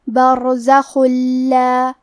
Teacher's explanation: لام حروف الادغام بغیر غنہ میں سے ہے اور ادغام کا معنی ہے حرف کو حرف میں داخل کرنا تو ہم یہ تنوین کو لام میں ملا کے بغیر غنہ سے لیکن تشدید کے ساتھ یہ حکم کو ادا کریں گے